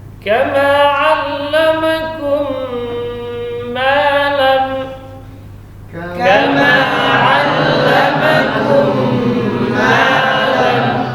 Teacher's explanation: Mim sukun kemudian mim. Ini idgham mim. Tahan 2 harakat.